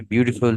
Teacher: beautiful में first syllable जो है वो stress है